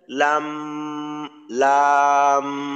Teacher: আমরা চার আলিফ টানি টানার পরে কিন্তু এক আলিফ পরিমাণ আমরা গুন্না করি